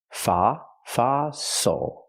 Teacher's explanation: Use the open ah sound like hot and stop for the O.